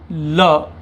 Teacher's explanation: तो आपकी जीभ ऊपर टच करेगी, दोनों गालों के पास से हवा निकलेगी, इस कारण इसे पार्श्विक व्यंजन कहा जाता है। · वह व्यंजन जिसके उच्चारण में जिह्वा हवा का मार्ग रोक लेती है, तथा हवा अगल बगल या गालों के पास से निकलती है। इस कारण पार्श्विक व्यंजन कहा जाता है।